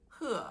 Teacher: it's a high falling tone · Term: tone four